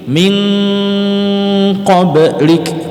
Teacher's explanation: Di sini ko kan huruf ko di sini kan ko. Ketika kita menyebut min, maka kita sudah siap menyebut ko-nya. Jadi mau tidak mau min itu jadi eng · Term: ikhfa